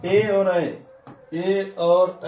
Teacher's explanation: ए और ऐ को बोलने में कंठ और तालु दोनों का उपयोग होता है। इसलिए इसको कंठ तालव्य वर्ण कहते हैं।